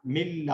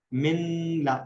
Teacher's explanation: ناک سے ساؤنڈ نہیں آ رہی تو مرج ہو رہا ہے لیکن بغیر غننے کے ہو رہا ہے